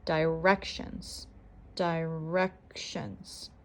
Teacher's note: the second syllable is stressed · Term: syllable stress